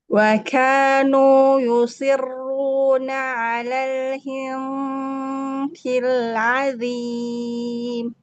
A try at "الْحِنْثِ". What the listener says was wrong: Ini hi-nya harus lebih tipis. Ke si-nya juga tipis. Semua pangkal lidahnya turun tuh. Lidahnya keluarin. kayak mau baca hissi. mau baca, ya, kayak mau baca saknya tasdid. Hissi, gitu kan lidahnya?